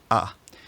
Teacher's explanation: sometimes you'll hear me pronounce the front a vowel kind of backed to a low Central vowel